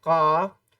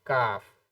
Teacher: آپ حلق کی اندر لے جائیں گے تو بڑا قاف یعنی قاف، اور تھوڑا سا اور اس سے پہلے سے نکالیں گے تو چھوٹے کاف کی ادائیگی یعنی کاف